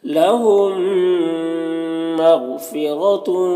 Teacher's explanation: मीम साकिन के बाद मीम है, तो मीम मीम के साथ मुदगम हो जाएगा, इसको इदगाम शफवी कहते हैं।